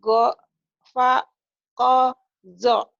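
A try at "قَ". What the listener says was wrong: ya bukan go ya itu ko.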